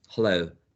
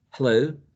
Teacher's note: It's not velar, it's glottal